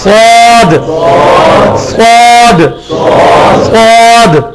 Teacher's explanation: اس کے بعد سواد ویسے ہی نکالنا ہے جیسے سین نکالتے ہیں, صرف جس طرح تا کو موٹا کیا تھا تو بنا تھا, سین کو موٹا کریں گے سواد بنے گا, مخرج وہی ہوگا سواد. سواد, سین والی جگہ صحیح, تھوڑی سی زبان گول کر کے سواد, سواد, سواد.